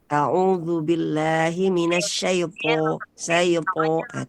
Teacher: alif yang berasal dari al-jauf di sana mengikuti ketebalan huruf po. Ya, jadi a'udzubillahi minasyaipo, syaipo, tebal ya.